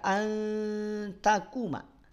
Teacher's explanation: ujung lidah nempel atau bertemu dengan pangkal gigi seri atas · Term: ikhfa